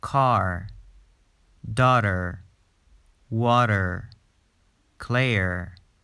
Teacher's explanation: Standard American English clearly pronounced the letter R after a vowel sound, where most British English speakers don't.